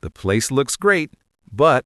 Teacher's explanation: The place looks great, but >> the place looks great, but I can hear how that upward pitch on great makes it sound genuine. If I say it with a flat robotic tone, it sounds sarcastic. The place looks great, but that sounds like I'm about to start a fight.